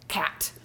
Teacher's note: the tongue has to start in the back and then quickly come to the front to hit that T